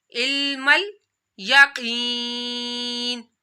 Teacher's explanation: यहाँ रूफ़े मुस्तालिया काफ है तो काफ को आप लोगों ने मोटा पढ़ना है। काफ या ज़ेर की, या साकिन से पहले ज़ेर आ रही है तो या मदा भी करना है।